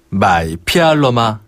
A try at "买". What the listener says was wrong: 마이. 조금 더 내려주세요. 땅 밑으로 파듯이. 마이.